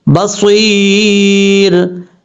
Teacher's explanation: एक अलिफ की मकदार लंबा करेंगे, और अगर वक्फ करेंगे तो यहाँ पे मद्दे आरिज़ वक्फी भी कर सकते हैं, उसके यानी 2.5 से 3 अलिफ के बराबर उसको लंबा कर सकते हैं, क्योंकि रा को जब आरिज़ी तौर पर साकिन करेंगे तो तब मद्दे आरिज़ वक्फी हो सकती है